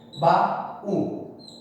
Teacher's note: Porque baú forma um hiato com o U tônico aí.